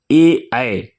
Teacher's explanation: ए ऐ का उच्चारण स्थान कंठ तालु है